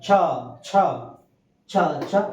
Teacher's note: এগুলোকে তালব্য বর্ণে তালুতে আঘাত করে, সেজন্য এগুলোকে বলা হয় কি তালব্য বর্ণ বলা হয়